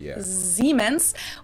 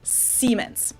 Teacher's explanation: voiced s which would be a z in english siemens while english speakers pronounce it with a voiceless s · pronounce it with a voiced S, which would be a Z in English, Yeah. Siemens, while English speakers pronounce it with a voiceless S, Siemens. In English, that's a pretty significant difference, and it's usually indicated by using the letter Z, which makes a Z sound, or an S, which makes a S sound.